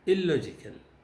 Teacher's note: when the word starts with an L, the N becomes completely an L. There is total assimilation.